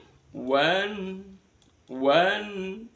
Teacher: maka bunyi nun sukunnya harus dibaca jelas. namanya izhar halqi.